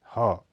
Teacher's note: यह घोष ध्वनि है, इसका उच्चारण स्वर यंत्र मुख से होता है। यह संघर्षी ध्वनि है, आदि ह में घोषत्व कम माना जाता है।